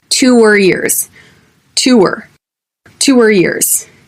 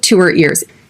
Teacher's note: You can barely hear the H at the beginning of these words.